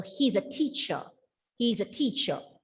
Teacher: when the letter r comes at the end of a word it goes silent